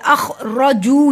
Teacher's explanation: रॉ को इस तरह से पढ़ा जाता है जैसे ज़बान वाइब्रेट करती है, र की आवाज़ आनी चाहिए।